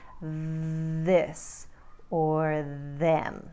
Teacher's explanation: make the sound as in think or thorough and then there's the voiced version where we do vocalize on the th as in this or them